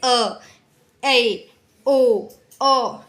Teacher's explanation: अर्धवृत यानी कि half open, जिसमें मुंह का जो है द्वार वो आधा खुलता है